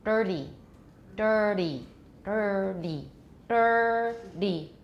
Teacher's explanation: For dirty, I don't curl my tongue, but if I did, dirty, dirty, dirty, dirty. When I make the D coming out, because my tongue was curled up, it's back to front instead of up to down.